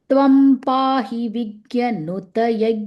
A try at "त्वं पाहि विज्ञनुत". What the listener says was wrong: Vignya. Nasal sound. Yeah, both the nasal sound. Initially it was different. Vignya, Yajna.